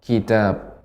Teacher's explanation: ada hamas ya pada ta, karena sifat ta itu hamas